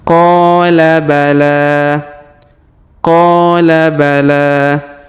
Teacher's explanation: huruf la di ujung kita panjangkan dua harakat karena Alif kecil di atasnya dan alif bengkok di depannya Q bala Q bala kemudian kita